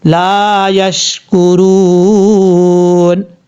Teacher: یا کے بعد جو شین ہے، اچھا یہاں پر قلقلے سے بچنا ہے، آپ نے قلقلہ بالکل بھی نہیں کرنا · جب یہاں پہ رکیں گے سٹاپ کریں گے تو نون کے اوپر، کیونکہ اصل میں یہ پہلے سے جو ہے وہ زبر ہے، جب ہم اس پر سٹاپ کریں گے تو عارضی طور پر نون کو ساکن کر دیں گے، جزم کے ساتھ پڑھیں گے. عارضی طور پر یعنی اس پر وقف کرنے کی وجہ سے یہاں پر مد عارض وقفی بھی آپ کر سکتے ہیں.